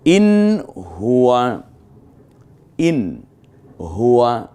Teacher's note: অর্থাৎ মূলত এটা ইজহার করে পড়তে হয়, স্পষ্ট করে পড়তে হয়।